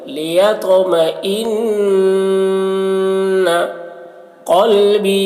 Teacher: نون مشدد ہے، نون میں غنہ کریں گے